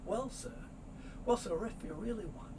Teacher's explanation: the r sound is going to move over